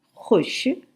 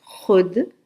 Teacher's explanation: یہاں واو ساکن ہے، یعنی لکھا گیا ہے مگر بولا نہیں جاتا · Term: واو معدولہ